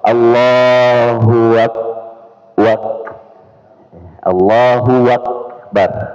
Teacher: menambah wau atau hua ya pada lafaz Allahu Akbar